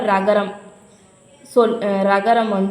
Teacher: நாக்குடைய நுனி மேல் அன்னத்தோடைய மைய பகுதியை உரசுது. அப்படி உரசறதால ரகரம் ரகரம் தோன்றுது. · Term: வல்லின ரகரம்